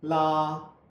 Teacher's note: Now, let's look at the L up close and in slow motion. L the tip at the roof of the mouth just behind the teeth